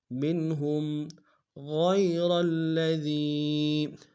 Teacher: یا لین بغیر کھنچے پڑیں گے